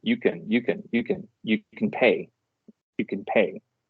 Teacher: if I were to transcribe that phonemically it would be you can together and then pay would be separate